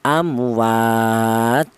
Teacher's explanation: Semua kita berhenti di sini, berhubung ada tanda wakof ya, nafasnya tidak kuat, kita berhenti di sini. Maka huruf ta yang terakhir ini bertanwin dhammah ini harus mati atau harus disukunkan